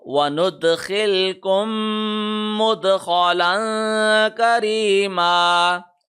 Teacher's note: چونکہ میم پہ تشدید ہے، میم کے اوپر ایک سیکنڈ کا غنہ بھی ہوگا، یعنی میم دونوں ہونٹوں کو ایک سیکنڈ تک ہم بند کر کے رکھیں گے